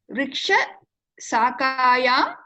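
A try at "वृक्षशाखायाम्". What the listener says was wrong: It is Shakayam, not Sakayam. Vriksha Shakayam.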